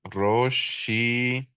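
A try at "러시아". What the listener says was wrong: Excelente. Roshia. Muy bien.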